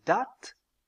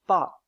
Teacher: La voyelle A de date est une voyelle antérieure, c'est-à-dire qu'elle est prononcée avec la langue en avant, tandis que la voyelle A de pâte est prononcée avec la langue en arrière. Cela n'est pas évident sur ces deux schémas, mais en regardant bien, on voit ici que la langue est légèrement plus en avant que pour la production de la voyelle A sur le schéma à droite. · le A de date est une voyelle étirée, c'est-à-dire que pour la prononcer, les lèvres doivent être étirées, écartées.